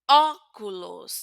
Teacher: Ahora, si tengo la o con la tilde aguda, entonces ya sé que la pronunciación será abierta. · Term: o abierta